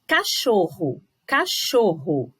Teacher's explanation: o cho aparece bem forte